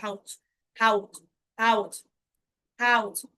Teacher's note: এরপরে হচ্ছে এই যে দেখেন এস লাস্ট আছে, এস যখন লাস্টে থাকবে তখন তার উচ্চারণ হবে চয়ের মতো